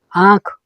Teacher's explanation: तो बोलते समय हमें नाक का भी साथ में उच्चारण आ रहा है। अगर हम सिर्फ बोलेंगे, अगर आँख को नाक बंद करके बोला जाए तो फिर हम बोल नहीं सकते, तो फिर हो जाएगा आँख। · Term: अनुनासिक